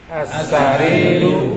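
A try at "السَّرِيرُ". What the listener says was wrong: Nah, sahih.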